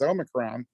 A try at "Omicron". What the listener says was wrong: there's no N in Omicron. It's Omicron, no N.